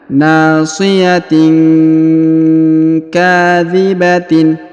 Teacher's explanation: tanwin in bertemu dengan huruf Kaf maka didengungkan dan disamarkan